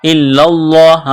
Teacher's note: لام میں سختی کرنی ہے، دبانا ہے